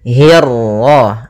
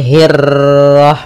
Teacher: untuk huruf ra ketika dia berharakat tasydid itu atau dia berharakat sukun, dia ra-nya 1 kali takrirnya. Tidak boleh banyak-banyak, tidak boleh hirrah. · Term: ra tafkhim